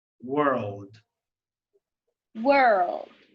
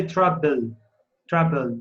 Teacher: the l is usually dark l when the l becomes in the middle or at the end of the word